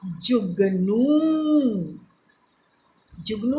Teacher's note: ज को मैंने जल्दी बोला तो इसमें ह्रस्व और नू दीर्घ